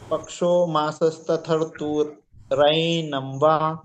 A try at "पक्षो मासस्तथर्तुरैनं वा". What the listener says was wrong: बिल्कुल ठीक।